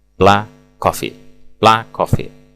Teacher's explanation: dengan menghilangkan bunyi akhir konsonan yang ada pada kata sebelumnya, yaitu kata ini black, atau tidak membunyikan dua kali konsonan